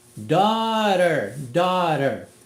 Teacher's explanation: O GH não é pronunciado aqui. E o T fica com o flap, só passa a língua no céu da boca, como se fosse um Rzinho.